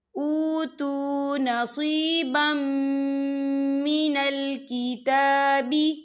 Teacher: إِلَى الَّذِينَ أُوتُوا نَصِيبًا من الکتاب، یہاں دیکھیں نصیبم، با کے پر تنوین ہے، تنوین کے بعد جو ہے میم آ رہا ہے اور میم جو ہے حروف یرملون میں سے ہے، تو یہاں پر ادغام ہوگا، تو ہم اسے غنے کے ساتھ پڑھیں گے